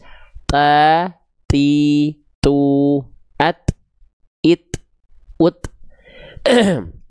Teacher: Ta cukup dipercikan, nafasnya bukan berdesis. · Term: huruf ta